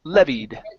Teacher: The word is pronounced levied. The stress is at the very beginning.